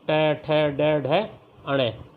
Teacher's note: मूर्धा बच्चों जो जीभ के आगे खुरदरी लहर वाली जगह होती है, जो हमारी जिह्वा है उसके आगे खुरदरी लहर वाली जो जगह होती है बच्चों, उसे मूर्धा कहते हैं। तो आता है जिन वर्णों का उच्चारण करते समय जो जिह्वा है वो मूर्धा को स्पर्श करती है। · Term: मूर्धन्य